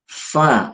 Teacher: fa ini adalah ee bibir bawah bagian dalam. bibir bawah bagian dalam dengan ujung gigi seri bagian atas